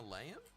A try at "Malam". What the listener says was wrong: No, because it's not Malayam. There's no layam at the end. It's Malam.